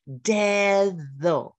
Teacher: That English sound of TH when we voice it is the Spanish medial D sound.